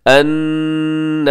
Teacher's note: नून मुशद्दद पे गुन्ना कीजिएगा और खड़ी ज़बर की वजह से लंबा कीजिएगा।